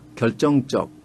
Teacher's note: 근데 북에서는 결정적 된소리로납니다